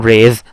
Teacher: in raise, the last sound is alveolar